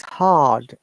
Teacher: If you follow the British IPA, we do not pronounce R in this case. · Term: non-rhotic